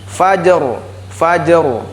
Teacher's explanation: kemudian ro sukun tebal